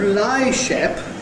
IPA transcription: l.aɪ–ʃ.e.p